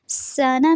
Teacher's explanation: سانا میں سین جو ہے اس میں سیٹی کی آواز رہے گی اور نون کی زبر کو آپ نے لمبا نہیں کرنا.